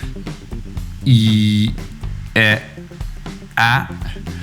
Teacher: if you go down from E, E, A, you notice your mouth is opening wider and wider